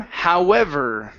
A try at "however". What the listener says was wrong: The V sounds good. We need to work on the ER sound at the end, okay?